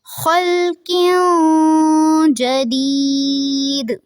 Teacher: جب وقف کریں گے تو دال پہ قلقلہ کریں گے کیونکہ یہ حروف قلقلہ میں سے ہے.